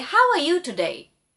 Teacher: the tone rises and that is the rising tone